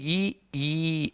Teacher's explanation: ನಾಲಿಗೆ ಮತ್ತು ದವಡೆಯ ಸಹಾಯದಿಂದ ಈ ಅಕ್ಷರಗಳು ಹುಟ್ಟುದ್ರಿಂದ ತಾಲವ್ಯ ಅಕ್ಷರಗಳು ಅಂತ ಕರೀತೀವಿ